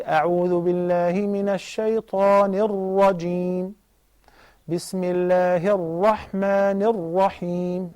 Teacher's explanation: the Ra is fattened because it has Fatha